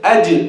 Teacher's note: with the Jeem, we have to know that it is shadid, not rikhu. And to get rid of the shidda, we make qalqalas.